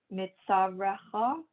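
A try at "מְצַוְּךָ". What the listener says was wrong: It's a V. Because the tzadi has its own vowel.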